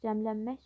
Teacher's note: Cəmlənmək sözünə vurğu sondadır.